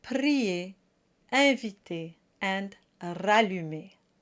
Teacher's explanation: The A sound does not have a diphthong.